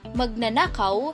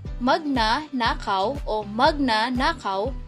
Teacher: Mapapansin natin ang pag-alis ng haba sa pantig at ito ay nagbabago ng kahulugan ng salita.